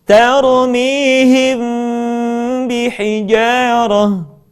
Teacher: Mim mati ketika bertemu dengan huruf ba, bibir tidak sempurna rapat, melainkan agak direnggangkan sedikit.